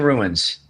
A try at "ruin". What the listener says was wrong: You're pronouncing it rune, which is like RUNE.